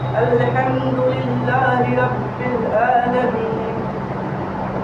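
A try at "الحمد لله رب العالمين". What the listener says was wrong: الحمد للہ رب العالمین، عالمین، عین کوشش کریے عین پورا نکلے، عین، عالمین، عالمین،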